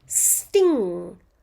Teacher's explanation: in the word sting, I can only hear a ng sound.